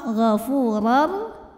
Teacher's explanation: maka tanwin masuk ke ra, ghafurar, tanpa berdengung. Artinya tidak perlu ditahan. Jadi ini masuknya idgham bila gunnah yang kamil, masuk tanwin ke huruf ra secara sempurna.